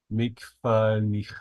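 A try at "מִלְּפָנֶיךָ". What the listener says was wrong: All right, this is a lamed. Mille. Milfanecha.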